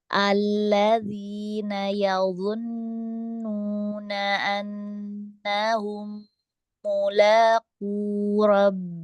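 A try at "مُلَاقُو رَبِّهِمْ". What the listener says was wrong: Tipisin lagi lamnya. Nah, di sini lamnya tipis. Mulaku.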